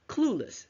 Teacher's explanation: The second syllable is schwa, which means they are almost unheard